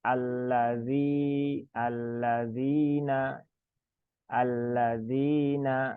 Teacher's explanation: maka zinya dibaca 2 harokat ya, jangan panjang-panjang, cukup 2 harokat.